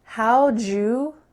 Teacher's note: The word did is kind of lost in the middle there. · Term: reduced way